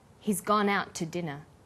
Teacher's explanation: The t sound is pronounced only once. · in out is held slightly longer he's gone out to dinner the TT sound is pronounced only once